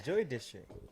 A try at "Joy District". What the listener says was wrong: saying it right now. You pronounce Joy Joey.